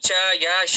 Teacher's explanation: ಈ ತಾಲವ್ಯ ಅಂತ ಕರೀತೀವಿ ಇವು ಮೇಲ್ದವಡೆ ಅಂದ್ರೆ ಅಪ್ಪರ್ ಪಾರ್ಟ್ ಆಫ್ ಮೌತ್ ಏನಿದೆ ಅಲ್ಲಿಂದ ಕ್ರಿಯೇಟ್ ಆಗ್ತಕ್ಕಂತ ಶಬ್ದ